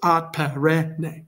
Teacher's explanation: Perenne goes short, long, short.